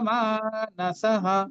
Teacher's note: মানসঃ মাটা দীর্ঘ হবে, শেষে বিসর্গের পরিবর্তে ভয়ের মতো উচ্চারণ করবো আমরা।